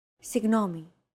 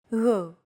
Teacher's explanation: To get that sound right, your tongue and the back part of your mouth should be barely separated from each other while you blow a steady stream of air between the small separation. Another approach is to try to pronounce a G as if an H sound were to follow after it and hold that sound while you exhale.